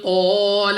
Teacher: قاف مستعلیہ میں سے ہے، موٹا پڑھیں گے منہ اور آواز کو کھول کر